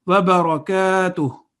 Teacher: kaf has an alif of elongation, so the sound would be 2 seconds.